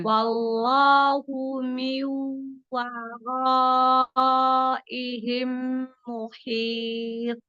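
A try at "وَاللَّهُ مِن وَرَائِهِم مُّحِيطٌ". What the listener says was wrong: Masya Allah, hanya kurang lama di meme-nya ya.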